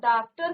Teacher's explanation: इसका उच्चारण आ तथा ओ के बीच का होता है यानी कि ना तो आप इसको पूरा से आ बोलेंगे ना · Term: आगत ध्वनि